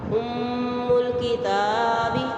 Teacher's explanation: ام میم مشدد ہے، غنہ واجب ہوگا. ام الکتاب تا پہ مد اصلی 1 شد حرکات کھینچ کے پڑھیں گے.